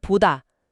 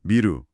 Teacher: 두 소리 모두 양순음, 그러니까 두 입술이 붙었다 떨어지면서 나는 소리라는 공통점에서 출발한 아주 자연스러운 변형인 거예요.